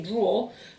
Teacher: when i speak in essex we tend to just say draw for whether you're drawing with your pen or if you're putting your socks in a drawer